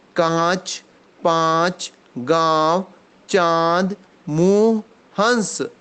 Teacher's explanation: इसका उच्चारण करते समय हवा नाक और मुख दोनों से निकलती है और अनुस्वार की अपेक्षा बल भी कम लगता है। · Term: अनुनासिक